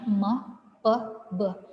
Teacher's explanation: bunyi itu dia bacanya me pe be kalau bilabal itu artinya bibir atas dan bibir bawah itu bertemu sehingga membentuk bunyi stop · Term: bilabial